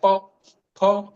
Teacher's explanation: हमारे होठ दोनों छू रहे हैं, तो ये ओष्ठ का स्थान है